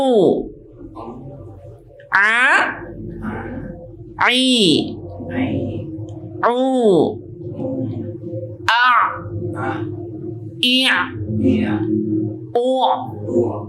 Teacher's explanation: huruf ain itu keluar dari tenggorokan kita bagian tengah. Boleh ditaruh lagi telunjuknya di tenggorokannya bagian tengah.